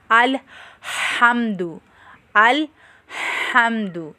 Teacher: ہا کی آواز بھی وسط حلق یعنی حلق کے درمیان والے حصے سے نکلتی ہے